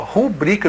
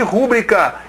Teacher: não existe rúbrica, e sim rubrica, ela é paroxítona, não pode ter acento.